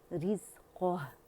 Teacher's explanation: क़ह, हा भी बारीक है और क़ा मोटा है। क़ह, री भी बारीक है, रॉ कसरा है